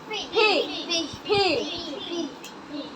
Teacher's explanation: দুই ঠোঁট, দুই ঠোঁট একসাথে উচ্চারণ করতে হবে।